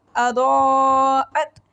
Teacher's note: فلما اضاءت ضاد کو موٹا پڑھیں گے اور اس کے اوپر مد ہے، 5 فنگرز کھینچ کے پڑھیں گے. حمزہ کو گلے کے آخری حصے سینے والی سائڈ سے پڑھیں گے. اضاءت ما میم کے ساتھ الف مدہ ہے، 1 سیکنڈ کے لیے لمبا کریں گے.